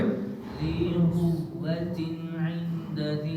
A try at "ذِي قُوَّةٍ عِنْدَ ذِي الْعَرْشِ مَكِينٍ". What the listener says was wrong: اخفا کرنا ہے، اخفا کرنا ہے، عند، غنہ نہیں کرنا، اخفا کرنا ہے۔ ذی قوت عند ذی العرش مکین،